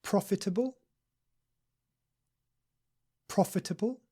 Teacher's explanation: with the stress on the first syllable